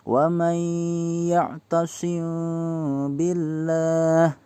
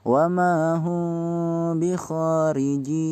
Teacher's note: Cara membacanya dengan dimingkemkan, cuma tidak mingkem, ngebuka sedikit ketika kita bertemu mimati. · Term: Ikhfa syafawi